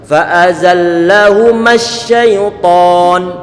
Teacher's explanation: dari mem yang difathahkan jangan diberikan mat, langsung disambungkan ke huruf sin yang telah ditasydidkan. Matnya dihilangkan.